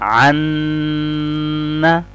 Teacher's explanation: हम लंबा पढ़ेंगे 4-5 सेकंड के लिए, आवाज को नाक से अदा करेंगे, इसको बोलते हैं गुन्ना, अन्ना।